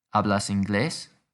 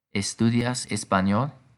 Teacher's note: we don't need to use do or arrange words to ask questions we can just use the rising intonation at the end